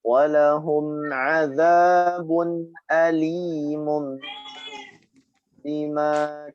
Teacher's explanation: Nah, tapi tidak masalah kalau kita membaca dengan bibir yang menempel. Alimun intinya harus dengung di sana. Tidak boleh dibaca jelas.